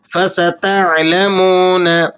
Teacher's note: عین کو آپ نے حلق سے ادا کرنا ہے، اور یہ واو مدہ ہے، اسے آپ نے 1-2 سیکنڈ کھینچ لینا ہے۔